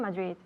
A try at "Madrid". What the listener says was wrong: Yeah, Madrid. You know, in English we have to pronounce those D's. Madrid. So I have the D with my tongue touching the roof of my mouth behind my teeth. Madrid. Madrid.